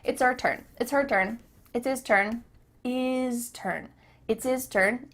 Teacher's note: the H at the beginning of his and her is cut off